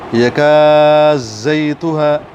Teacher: دال کو زا بنایا اور اس پر شد پڑھی تو یہ ادغام ہو گیا